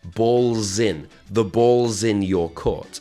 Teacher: we take the word balls and in and we squash them together and we make a z sound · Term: connected speech